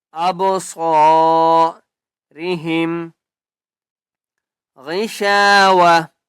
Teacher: غائن کو ہم موٹا کر کے پڑھیں گے